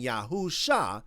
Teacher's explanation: they are forcefully shoving a long vowel into an unstressed syllable where it grammatically cannot exist